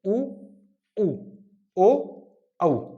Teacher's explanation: जिनको बोलते समय हमारे ओष्ठों की आकृति गोल हो जाती है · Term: वृत्तमुखी